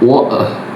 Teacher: the British speaker end on a pure, soft schwa